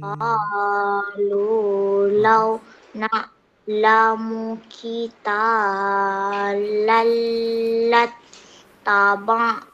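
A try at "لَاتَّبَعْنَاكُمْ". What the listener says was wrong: Na panjang. Na panjang. terbaca satu harakat.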